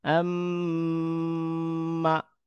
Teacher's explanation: মিম এর উচ্চারণ যে স্থান রয়েছে সেখানে মিমকে ধরে রেখে কিছুক্ষণ সেটা এক হরফ উচ্চারণের 2 গুণ বা 3 গুণ সময় ধরে রেখে পুনরায় এটাকে উচ্চারণ করা, এটার নাম হচ্ছে গুন্না।